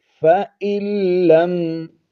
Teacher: حمزہ کو لام کے ساتھ ہم نے ملا دینا ہے اور یہ نون ساکن نہیں پڑھا جائے گا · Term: ادغام یرملون